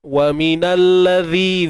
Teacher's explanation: Zi keluarkan sedikit hujung lidah. Sikit je.